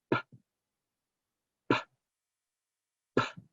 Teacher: the unvoiced stop sound with our lips is p, p, p. And if you put your hand in front of your face, you can feel that p, puff of air. Make sure you're not saying puh, adding that schwa, clip the schwa.